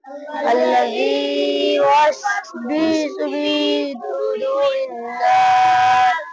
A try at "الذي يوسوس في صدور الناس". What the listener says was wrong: বিসু হবে না কিন্তু না, আল্লাযী ইউওয়াসউইসু, ওয়াও যে কি হয় উই, ওই যে বি হয় না, বাজের কিন্তু বি, ওয়াওজের উই। আল্লাযী ইউওয়াসউইসু ফি সুদুরিন নাস।